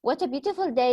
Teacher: This is not a question. We are making an exclamation. So it's a falling intonation.